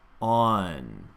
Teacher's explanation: So as you practice this N consonant in a final position, on, allow it just to be the tongue reaching up for the N as opposed to the jaw closing for the N.